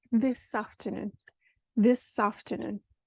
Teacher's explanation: there's no pause in the middle is there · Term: a marriage